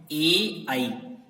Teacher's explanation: ये ए आई कंठ तालु से बोले जाते हैं